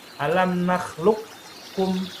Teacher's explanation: Alam nakhluqkum, qaf kaf ini berdekatan nih. Qaf kaf berdekatan ya. Yang satu agak dipangkal, yang kedua agak majuan dikit. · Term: idgham mutaqaribain